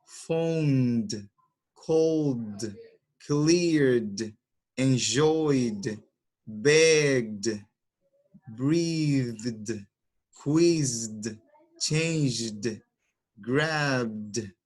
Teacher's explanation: si la consonante vibra, el verbo lo vamos a pronunciar de la siguiente manera, D, con esa terminación